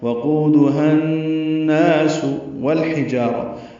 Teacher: ہا وسط حلق سے ادا کریں گے